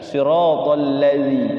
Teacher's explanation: pakai za ujung lidah